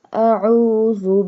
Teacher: pronounce ayn from the middle part of throat